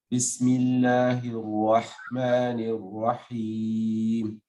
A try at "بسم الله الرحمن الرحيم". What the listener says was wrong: That's very good, by the way, but just Bismillahir-Rah. There's a subtle involvement of the lips in Rah. Bismillahir-Rah, not Bismillahir-Rah. Eliminate the involvement of the lips. Bismillah is completely from the tongue. Bismillahir-Rahmanir-Rahim.